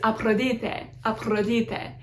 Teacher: It has a rolled R.